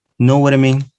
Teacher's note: flapping the sound ta, and becomes ra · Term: flapping ta